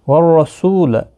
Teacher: رو زبر کی وجہ سے پر پڑھا جائے گا، سو واو مدہ ہے، لا کو کھینچنا نہیں۔